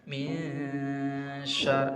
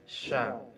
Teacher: Huruf sya makhrajnya adalah ujung lidah di antara dua gigi seri. Jadi ujung lidahnya tidak menyentuh apa-apa. Nah, ditahan 2 harokat penuh.